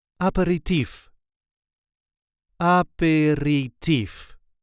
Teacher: There is a light emphasis on the last syllable.